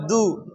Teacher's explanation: தால் பொம்மா து, மேல் பல்லின் பின்பக்கம் து